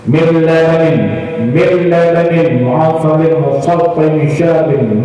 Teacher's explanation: Ada juga idgham tapi tidak ghunnah, masuk dia tidak berdengung. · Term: idgham bila ghunnah